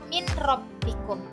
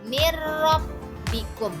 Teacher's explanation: artinya tidak gunah artinya dengung maka cara membacanya dengan tidak dengung di sini suara Nun menjadi hilang dan masuk ke huruf sesudahnya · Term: idgham bila guna